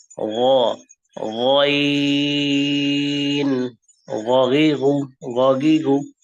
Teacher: 3টা ডট যেহেতু আছে, 3 সেকেন্ড, 6 হারাকা, আইন। আইউ গ, বাংলা গয়ের মতো, তবে ভারী করে আওয়াজটা হবে, মুখ ভরে